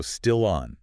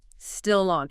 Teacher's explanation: That final consonant sound naturally attaches to the following vowel sound. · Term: Consonant linking to a vowel